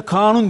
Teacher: biraz uzatıyoruz Evet Şimdi mesela kanun diyoruz bakın kanun demiyoruz kanun yani kanunun birinci hecesini biraz uzatıyoruz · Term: uzun ünlü